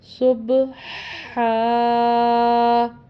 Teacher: ہا کے تلفظ کا بھی خیال کرنا ہے کہ یہ حلق سے ادا ہوتا ہے تو اس کو حلق سے ہی ادا کرنا ہے، دوسرے ہاتھ سے اس کو نہیں ملانا۔